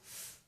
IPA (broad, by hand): f